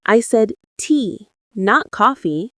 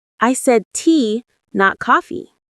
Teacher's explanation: The stress on tea shows the contrast. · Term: contrastive stress